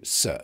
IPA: s